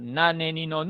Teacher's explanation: la N era nasal, y era alveolar